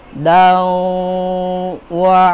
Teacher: huruf da yang berharokat tanwin dimasukkan ke huruf wa-nya, jadi didengungkan 2 harkat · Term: idgham bigunnah